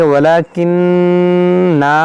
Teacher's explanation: دیکھیں نون مشدد ہو اس میں غنہ کریں